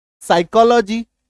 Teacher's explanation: पी का उच्चारण ही नहीं है गायब हो गया